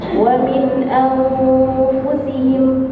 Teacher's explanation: Dengungnya deketin ke makhraj fa-nya. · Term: ikhfa